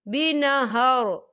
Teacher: مبتلیکم بنہر، یہاں دیکھیں آپ کو چھوٹا سا جیم لکھا ہوا نظر آ رہا ہے، تو یہ وقف جائز کی علامت ہے، تو یہاں پر ٹھہرنا بہتر ہے۔ وقف کی صورت میں را جو ہے ساکن ہو جائے گا